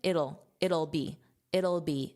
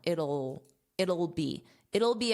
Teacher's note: So very unstressed, just that dark L sound.